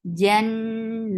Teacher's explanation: no ch sound in jim. And attached with noon, noon will get sifa of gunna. And this is akmal gunna. Jan. Here you will give nice long sound.